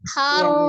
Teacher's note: huruf tipisnya tidak boleh terpengaruh menjadi tebal tidak KH tapi Har h-nya tetap ha